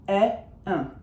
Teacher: And un is just e, but with some nose involved. E, un. I don't change my shape, and I certainly don't say n or m afterwards. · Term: nasal vowels